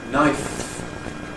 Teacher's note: 'Knife' /naɪf/ ends in a voiceless fricative.